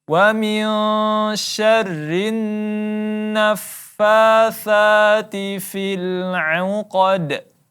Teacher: Ya, huruf qaf ditebalkan. Kemudian di akhirnya ada qalqalah wusta, maka kita pantulkan